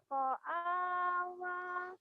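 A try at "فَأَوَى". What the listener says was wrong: Fa bukan ko, fa. Fa'awa. Fa'awa.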